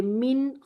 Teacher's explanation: नून साकिन और तनवीन के बाद हरूफ हल्की के 6 हरूफ में से कोई भी हर्फ आ जाए तो नून का इजहार होगा, बज़ाहिर इजहार होगा, लेकिन फितरी गुन्ना मौजूद रहेगा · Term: इजहार हल्की